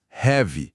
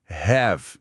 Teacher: O adjetivo heavy, pesado, tem o som do i final, heavy. Diferente do verbo have, ter, que termina com o som de V, have.